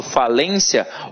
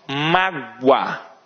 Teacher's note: esse i u átonos eles sempre vão funcionar como semivogais